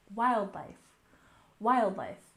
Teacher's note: we stressed the first syllable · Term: stress the first syllable